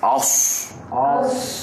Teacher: semua huruf ni bila sebut lidah terangkat maknanya tebal